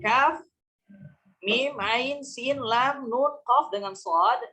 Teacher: Ini dibaca panjangnya 6 harakat. Hukumnya lazim.